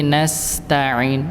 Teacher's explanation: dia agak mengalir, dialirkan huruf sinnya dan berdesis. Karena emang sifatnya nggih. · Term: mengalir dan berdesis